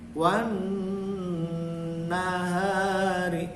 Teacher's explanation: Jadi wan, jangan langsung wan nahari, tapi n-nya itu, nunnya itu dipanjangkan dengung